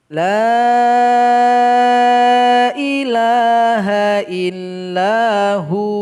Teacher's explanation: Jadi langsung disukunkan sehingganya dia menjadi mad asli dan dipanjangkan 2 harokat.